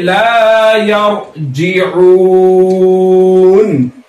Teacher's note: यहां पर देखो ये रो साकिन है, रो साकिन से पहले जबर है, इसलिए रो साकिन पूर होगी